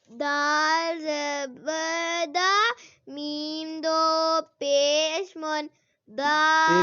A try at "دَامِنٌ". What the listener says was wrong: ایک لمبا نہیں کرنا